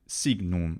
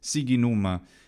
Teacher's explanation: hard G in front of the N isn't a normal thing for an Italian to do anyway